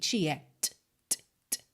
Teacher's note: E dentro da fonética do inglês, esse T, ele vem purinho mesmo, sem nenhum traço de vogal, tá? Não é ti, é t, t, t. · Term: não vocalizado